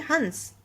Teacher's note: हंस तो आपको बहुत हल्की सी वाइब्रेशन नाक में फील होती है